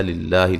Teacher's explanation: لفظ اللہ کو باریک پڑھیں گے، اس سے پہلے زیر ہے